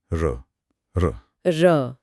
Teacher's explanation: जीभ की नोक कांपती है। हां वो कांपती है और लुढ़कती सी है इसीलिए लुंठित है।